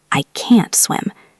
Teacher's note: can't usually keeps its stress